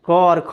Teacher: इन वर्णों के उच्चारण के क्रम में स्वर तंत्रियाँ झंकृत नहीं होती है, इसके उच्चारण में बहुत ही सहज रूप से हम इसका उच्चारण कर लेते हैं, इसीलिए ये अघोष कहलाता है।